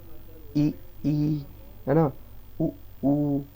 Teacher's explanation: जीवा ऊपर जाए, ऊपर जाके तालू से टकरा जाए, तो इसको बोलते हैं सवृत स्वर। ई, ई, है ना, उ, ऊ, ये होते हैं।